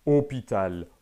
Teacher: il y a seulement l'accent circonflexe qui note une prononciation de O fermé